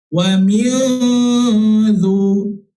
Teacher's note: Nun mati bertemu dengan huruf dal, hukumnya itu di situ dinamakan sebagai ikhfa hakiki. Ikhfa hakiki yang mana kita kena dengung dengan kadar 2 harakat.